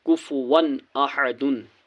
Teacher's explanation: من عین آنیتن، کاف پیش کو، فا پیش فو، کفو، واو الف دو زبر ون، کفو ون، حمزہ زبر ا، ح زبر ح، اح، دال دو پیش دن، کفو ون احدن، یہاں پر دو زبر کے بعد حمزہ ہے، حمزہ حرف حلقی ہے اس لیے یہاں پر نون کی آواز کو ظاہر کرنا ہے۔ کفو ون احدن، بغیر گنہ کے جلد پڑھنا ہے۔